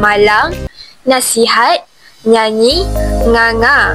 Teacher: Pengaruh bunyi sengau menengah merebak kepada bunyi vokal [muzik] kerana rongga hidung tidak sempat ditutup sepenuhnya semasa menyebut bunyi vokal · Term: nasalisasi